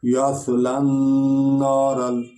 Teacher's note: یہ سین بھی نہیں بنانی، سیٹی بھی نہ نکلے، بلکہ اس کو تھوڑا سا سواد کو پر پڑھنا ہے